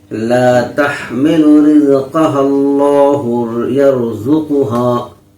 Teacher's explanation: اللہ کا لام پور پڑھا جائے گا، کیونکہ اللہ کے لام سے پہلے ہاں پر زبر ہے۔